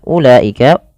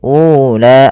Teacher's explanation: Pada lafal ee ulaika ini enggak boleh dipanjangkan, tidak boleh ula.